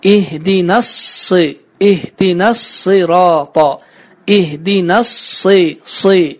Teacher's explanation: burada biz sad hərfini qalın bir şəkildə tələffüz etməliyik